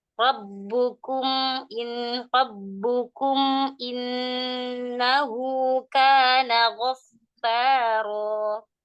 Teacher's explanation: Rabbukum, jangan dikasih gunnah, itu idhar syafawi. Kasih sifatnya saja, tawassut.